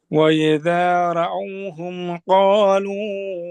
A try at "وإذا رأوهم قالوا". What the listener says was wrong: আবারও কিন্তু রায়ের মতো হয়ে গেল। আপনার এইটা মাঝে মাঝে হয়ে যায়, রয়ের জবর উচ্চারণটা রা র। আর একটু লক্ষ্য রাখবেন, ওয়া ইদা রাআউনা রাআউ।